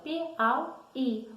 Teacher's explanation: A sílaba tônica, sendo a última, é oxítona.